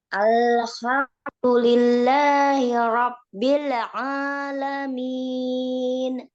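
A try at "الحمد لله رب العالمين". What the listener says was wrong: Hati-hati hak nih. Nih ketemu baru lagi. Hak jangan sampai kayak kok. Jangan ketukar. Hak itu agak bawah ya Mbak.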